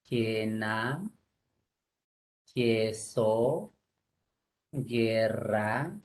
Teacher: No hay diptongo porque la U no suena. Recuerda que esos son dígrafos.